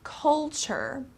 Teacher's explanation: this T-U-R-E becomes kind of like a ch sound